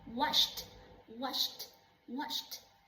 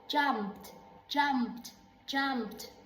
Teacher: it had no vibration on the neck